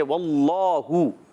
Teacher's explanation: واللہ، اللہ کے لام سے پہلے اللہ پاک کا لام آ رہا ہے، اس سے پہلے زبر ہے، واو کی ادائیگی ہونٹوں کی گولائی سے، لام پر کھڑا زبر بھی ایک کھینچ کر ادا کریں گے، اور ہا پر پیش ہے واللہ۔